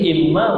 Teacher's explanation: wajibal munah dibaca dengan dengung 2 harakat